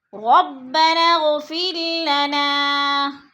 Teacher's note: ہم دونوں درمیان والے الف نہیں پڑھیں گے بلکہ نون کو غین کے ساتھ ملا کر پڑھیں گے